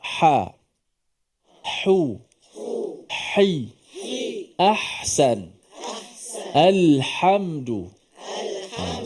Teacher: huruf Ha ini huruf yang bersifat dengan suara dan nafasnya dilepaskan apabila menyebut